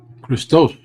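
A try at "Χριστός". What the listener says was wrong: Christos. And your mind is still on the K, while this is a he. This is the he sound. Better, but again, you lost the emphasis. You forgot that. The emphasis is here. Christ.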